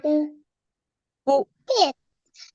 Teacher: اب ادائیگی کا طریقہ یہ ہے کہ قاف میں اوپر ہے پیش، ہونٹ گول کریں